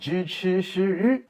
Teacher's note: zhi, chi, shi, ri, which are retroflex sounds